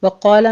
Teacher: وقال میں قوف کو پر پڑھیں گے، الف مدہ ہے، ساتھ پر ہو جائے گا